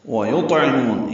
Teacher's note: یا کو طا سے ملانا ہے، طا پر اور اس پہ قلقلہ ہے، عین وسط حلق سے ادا ہوگا، مو واو مدہ ہے، دو حرکات لمبا کریں گے